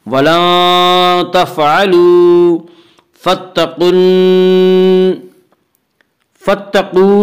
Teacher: قاف بھی حروف مستعلیہ میں سے ہے، اس لیے قاف کو بھی پر پڑھیں گے